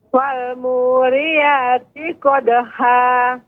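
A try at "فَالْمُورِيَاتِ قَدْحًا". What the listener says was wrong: Qadha. Lebih halus lagi Ibu pengucapan haknya.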